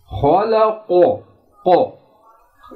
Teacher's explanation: क़ाफ की आवाज़ मोटी है झटके के साथ अदा होती है